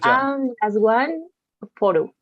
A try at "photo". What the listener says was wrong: The sound is bit ow. It's not o. Ow. Okay, ow. It's now, show, blow, like in that way. It's photo. Photo, right?